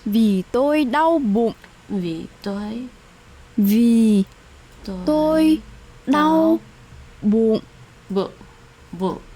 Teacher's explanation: It's described as a creaky, low falling, constricted, like a short length tone. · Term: heavy tone